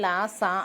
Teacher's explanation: మన నాలుక టీత్ కి టచ్ అవుద్ది అన్నమాట దంత్ అంటే టీత్ కదా ఆ టీత్ కి తగిలే సౌండింగ్స్ అన్నిటిని దంత్